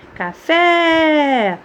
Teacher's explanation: Oxítona, a última sílaba mais forte.